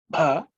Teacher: Ub plus a, which is bha, which is the aspirated bha, which is the fourth letter in the pa varga.